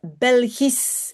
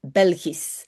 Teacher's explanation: if you have this SCH at the end, if it's followed by an E or not, you pronounce it as a simple S. So you will pronounce Belgisch, and you will not say Belgisch or sh or whatever.